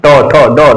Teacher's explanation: जीभ हमारी क्या होगी, मुड़ेगी, जीभ हमारी मुड़ेगी · हमारी जीभ क्या होती है, गोल होती है, और जीभ का अगला भाग जो है हमारे तालु में जो टच करता है उसे मूर्धा कहा जाता है, और इसका नाम क्या है, मूर्धन्य, मूर्धन्य, मूर्धन्य इसको कहा जाता है, इसका नाम मूर्धन्य, इसका नाम मूर्धन्य के नाम से जाना जाता है।